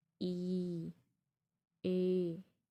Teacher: आपका जो जीभ का फ्रंट है, आगे का अग्र भाग है, उसका यूज़ करके आप इसको बोल पा रहे हैं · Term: अग्र स्वर